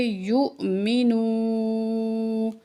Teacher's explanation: واو ساکن اس سے پہلے حروف مدہ میں سے ہے، اس لیے ہم واو کو ایک الف کے برابر کھینچ کے پڑھیں گے · حمزہ ساکن ہوتا ہے، تو ہم اس کو جھٹکے سے پڑھیں گے